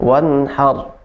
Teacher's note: tinggal getaran huruf ro itu cukup 2 aja ya, tidak boleh lebih dari 2